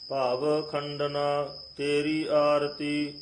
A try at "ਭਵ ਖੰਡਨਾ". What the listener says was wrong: ਭਵ ਖੰਡ ਨਾ ਇਸ ਤਰ੍ਹਾਂ ਨਹੀਂ ਕਹਿਣਾ ਭਵ ਖੰਡਨਾ